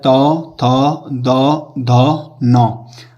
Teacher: इसमें आप दंत्य से क्यों कहा जाता है, क्योंकि जब भी हम इन शब्दों का उच्चारण करते हैं तो उच्चारण करते समय हमारी जीभ जो होती है ये हमारे दांत को स्पर्श करती है